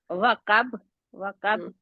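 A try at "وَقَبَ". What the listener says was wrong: अब काफ को दूसरा काफ पढ़ गए, काफ पढ़ना है, काफ नहीं पढ़ना।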